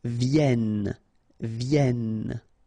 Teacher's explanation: So double consonant here, so when they are identical, they will open the sound of this E. So you will get it, and it will be produced like E, okay?